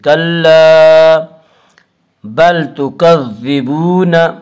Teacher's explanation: کلا بل تکذبون، واو مدہ وہ جو ساکن ہو، اس سے پہلے پیش ہو، واو مدہ کو 1 الف کے برابر کھینچ کر پڑھیں گے۔